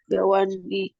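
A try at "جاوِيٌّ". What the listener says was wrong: Wawnya ditambahin ya. Ya-nya itu dihidupkan Jawiyun. Jawi, Jawiyun.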